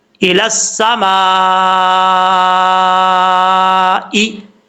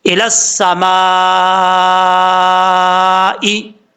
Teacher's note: आपने 5 अलिफ के बराबर इसको लंबा करना है। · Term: मद्दे मुत्तसिल